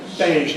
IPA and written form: beɪʒ (beige)